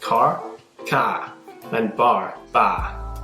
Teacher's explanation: This accent is most well-known for being non-rhotic, meaning the “r” is dropped in words like “car” (“cah”) and “bar” (“bah”).